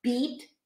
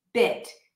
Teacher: the vowel pair, the tense E and the lax E